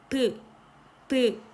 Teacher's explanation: 양입술이죠. 양입술이 쫙 붙으면서 공기의 흐름을 방해하고 있어요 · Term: 양순음